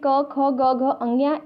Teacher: क वर्ग में जो भी वर्ण आते हैं जैसे क ख ग घ अंग्या, इसके साथ ही ह और विसर्ग, इन सब का उच्चारण स्थान जो होता है वह कंठ होता है